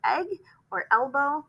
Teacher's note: when we say e the short sound our mouth goes wide